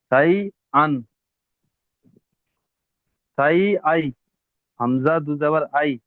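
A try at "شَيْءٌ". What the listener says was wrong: নয়, হামজা ইয়া যাবার আই হয়, হামজা দু যাবার আন।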